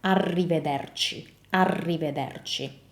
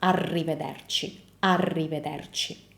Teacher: when you say the R in Italian, the tongue moves forward